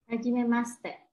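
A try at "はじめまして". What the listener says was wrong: Jangan dibaca hajimemashite. Jadi kita silentkan bunyinya shi, itu kita silentkan. Shite, shite. Kita silentkan I-nya, enggak begitu keras bunyinya. Shite.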